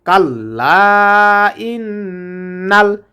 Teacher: এখানে গুণ হবে কারণ নুনের উপরে তাসিদ্ধ এসেছে